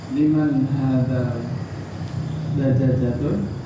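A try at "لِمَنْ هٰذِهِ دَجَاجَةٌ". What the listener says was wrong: Hajihid dajajat. nggak pakai tanwin. Liman hadhihi dajjajatu. hadhihi dajjaja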